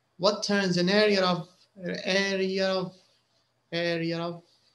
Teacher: when you get to area there's a little r sound